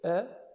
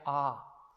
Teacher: la A corta, que es E, no es tan abierta como la A larga sería A.